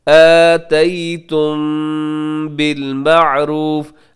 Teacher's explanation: آتیتم کے آخر میں میم ساکن کے بعد با ہے, تو یہاں اخفاء شفوی ہوگا. میم کی آواز کو تھوڑا سا ناک میں روکیں گے.